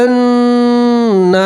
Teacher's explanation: نون کے اوپر تشدید ہے، نون میں گنہ کریں گے